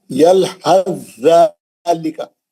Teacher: حرف سا ساکن کا ذال مشدد میں ادغام متجانسین ہو گیا۔ کیسا پڑھیں گے، یلحظ ذالک، سا بالکل غائب ہو گیا، انہیں نکال کے لکھ دیا وہاں، پڑھنا کیسا ہے، یلحظ ذالک، سا کا ذال میں ادغام میں متجانسین ہو گیا، ہے نا، مشدد میں ادغام میں متجانسین ہو گیا۔ · اور چوتھی مثال کیا ہے، یلحظ ذالک، یلحظ ذالک، یہ غلطی سے 2 چشمی ہاں لکھ دیا انہیں، یہ سا ہونا چاہیے، حرف سا ساکن کا ذال مشدد میں ادغام متجانسین ہو گیا۔ کیسا پڑھیں گے، یلحظ ذالک، سا بالکل غائب ہو گیا